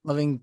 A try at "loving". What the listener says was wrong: It's like a pet peeve of engineers. Okay, it's just that the person is releasing their tongue too early.